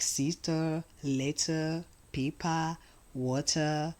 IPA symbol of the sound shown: ə